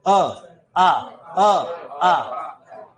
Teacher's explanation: अ और आ इनका उच्चारण स्थान कंठ है। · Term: कंठ वर्ण